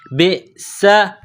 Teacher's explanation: بئس، با کو حمزہ کے ساتھ ملانا ہے، حمزہ ساکن ہے، با کو جب حمزہ کے ساتھ ملائیں گے تو جھٹکا دیں گے، با حمزہ زیر ب، سین زبر سا، سین میں سیٹی کی آواز پیدا کریں گے، سین کو باریک کریں گے